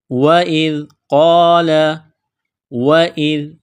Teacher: ذال کو نرم کرنا ہے، زبان باہر نکالیں گے ذال کو پڑھتے وقت